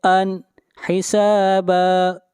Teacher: تنوین کے بعد حروف حلقی میں سے حا ہے، اس لیے اظہار کریں گے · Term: اظہار حلقی